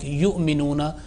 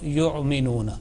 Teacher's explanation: And here on waw, yu'minuna, the first waw has a hamza, and here jerking sound is needed, and ayn sound should not be pronounced because ayn is not there, but it has been pronounced with ayn. It should be pronounced with jerk but without addition of ayn